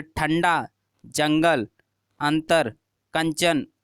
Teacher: अनुस्वार छोटी अंग जिसे बोलते हैं, अंग की बिंदी लगी होती है। अनुस्वार के उच्चारण में वायु नाक से निकलती है और उच्चारण झटके के साथ होता है